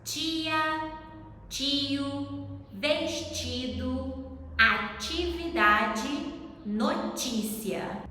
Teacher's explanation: when T comes before I in most of Brazil, it sounds like ch